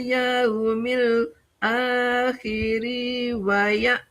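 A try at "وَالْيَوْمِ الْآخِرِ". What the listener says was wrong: Jangan jangan panjang. Akhiri.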